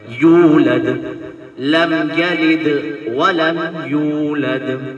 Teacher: جب واو ساکن ہوتا ہے اور کسی حرف سے ملتا ہے پیش کے ساتھ تو واو مدہ کہلاتا ہے، اس لیے ایک الف کے برابر کھینچ کر پڑھا جاتا ہے